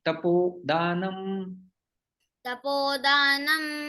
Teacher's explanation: विसर्ग ओ में परिवर्तन हो जाता है